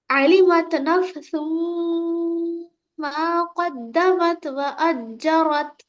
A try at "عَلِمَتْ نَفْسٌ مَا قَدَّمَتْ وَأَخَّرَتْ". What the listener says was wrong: जीम नहीं है बेटे हो।